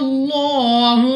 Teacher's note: الف سے پہلے زبر الف مدہ، مگر الف کے اوپر ہے مد، تو ہم نے اس کو 2 نہیں بلکہ 3، 4 یا 5 سیکنڈ تک کھینچنا ہوگا. لام اف اللہ سے پہلے حرف پر زبر، تو اس لام اف اللہ کو بھی پر یعنی موٹا پڑھیں گے